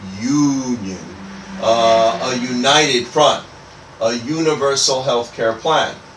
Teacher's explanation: the union doesn't really have a vowel sound. It has more like it has like a Y consonant sound.